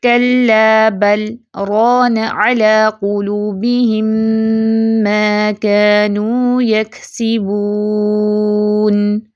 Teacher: تو ہم اس کو برانہ تو نہیں پڑھتے نا کہ با کو را سے ملائیں، نہیں، ہم بل کر کے سکتہ کرتے ہیں، سکتہ مین سمال پاز لیتے ہیں، سانس نہیں توڑتے، پھر ہم رانہ پڑھتے ہیں۔ طریقہ حفص عاصم من طریق شاطبیہ کے مطابق بل کے لام پر کیا جانے والا سکت لام کے را میں ادغام کو روک دیتا ہے اور لام کو واضح پڑھا جاتا ہے۔